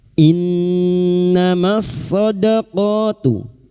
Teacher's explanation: Nun yang bertasdid ghunna musyadadah kita dengungkan selama tiga harakat.